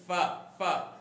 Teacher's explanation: فا کو جو ادا کیا جاتا ہے نا اوپر کے دانتوں کے اوپر کنارے اور نچلے ہونٹ کے تر حصے سے